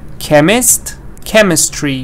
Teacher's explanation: the stress is not changing stress is again on chem